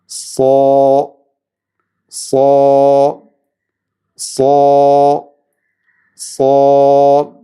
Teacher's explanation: ഇസ്തിഅ്ലാ എന്ന സിഫത്ത് സ്വാദിനുണ്ട്. നാവിൻ്റെ അങ്ങേയറ്റം അണ്ണാക്കിലേക്ക് ഉയർന്നിരിക്കണം സ്വാദ് ഉച്ചരിക്കുമ്പോൾ.